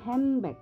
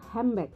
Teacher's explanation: akan terjadi asimilasi dan akan terdengar seperti kita mengucapkan huruf M N ini nanti akan berubah menjadi m ini bukan kesengajaan tapi karena faktor tergesa-gesa berbicara